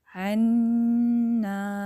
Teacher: آپ نے ان کو 1 الف کی مقدار دینا ہے، عنا، ناک میں اچھے سے گنگنی آواز لے کے جانی ہے ، نون مشدد اور میم مشدد پہ اچھے سے غنہ کرنا